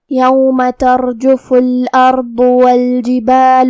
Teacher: یہاں را کا حکم ہے تفخیم کیونکہ اس پہ جزم ہے، لیکن اس کے پہلے والے حرف پہ تا پہ زبر ہے، تو ہم حرف الراء کو موٹی آواز میں پڑھیں گے